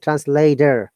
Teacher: like translator this is translator this is an american pronunciation translator t should be d and there should be r sound